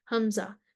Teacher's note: اقصی حلق سے جو سینے کی طرف ہو، حمزہ، جہر، شدت، استفال، انفتاح، اسمات، یہ قوی لیٹر ہے۔